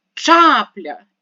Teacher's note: вимовляємо це слово ще раз чапля і ставимо наголос на перший склад